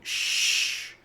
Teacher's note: T ends up sounding like an sh sound as in she. So, sh. The three vowels, i o u, form one sound only since the syllable is not emphasized.